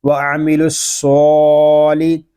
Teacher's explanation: سواد کو پر پڑھیں گے اور آگے جو لام ہے اس کو ہم باریک پڑھیں گے